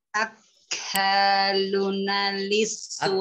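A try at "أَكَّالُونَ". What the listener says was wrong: Akaluna, lu-nya juga panjang.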